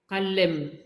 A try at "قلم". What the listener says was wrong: n'appuie pas sur l'em. Tu fais qalem. Qalem. Qalem. Qalem.